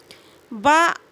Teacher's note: ब का उच्चारण दो ओठों के मेल से होता है